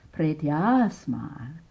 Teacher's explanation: Pretya, asmat. 2 A's meeting, becoming a long A.